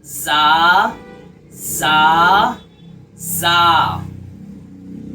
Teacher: ज़ा, इसका मखरज ये है, ज़बान का किनारा ऊपर और नीचे के दांतों के साथ आपस में जब मिलेगा, ठीक है, तो उसमें अंदर से सीटी की आवाज़ भी आपको निकालनी है, तब जाकर हर्फे ज़ा अदा होगा